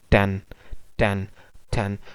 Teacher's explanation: टेन, तो एन की position अब वही है एल्वियोलर रिज वाली, एल्वियोलर रिज पर टंग टिप या ब्लेड टच करेगी